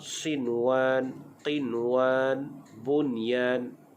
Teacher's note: itu namanya izhar mutlak, tidak dibaca dengan dengung